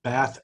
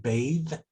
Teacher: the difference between bath and bathe is the amount of vibration that's happening in that th sound